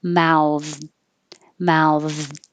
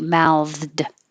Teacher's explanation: But if you don't hear the D, my tongue is still going to the D position and just stopping the airflow